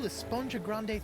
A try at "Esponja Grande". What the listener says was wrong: Actually, it's pronounced Esponja with an H sound at the end.